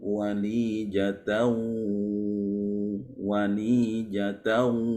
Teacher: kalau ada tanwin bertemu dengan huruf waw, maka menjadi idgham bi gunnah. Nah, walijatau.